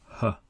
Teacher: The articulation is the deepest inside the throat. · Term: ha sound, h sound